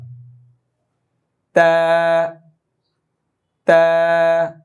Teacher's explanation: জিব্বার আগা দাঁতের গোড়া, সামনের দুই দাঁতের গোড়া।